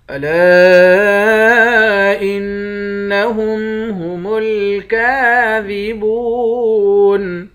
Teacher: لام کے بعد الف ہے، الف پر مد ہے، اس مد کو تین الف کے برابر کھینچیں گے. نون مشدد پر غنہ کریں گے.